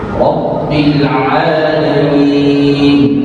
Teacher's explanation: Rabbil, tidak boleh bilang Rabbil ini tidak ditahan, tapi Rabbil, ya. Syaddah pada ba ditahan, harus ditahan dua ketukan minimal.